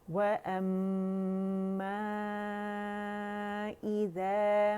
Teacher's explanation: تھوڑا سا انالائز کرنا ضروری ہے، واو باریک ہے اور یہ دیکھیں ہر میم غنہ مشدد ہے، ٹھیک ہے، اور اس کو ہم نے دینا ہے 2 2.5 3 کاؤنٹ تک آواز چلی جاتی ہے